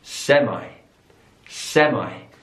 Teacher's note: so the stress is on the last syllable there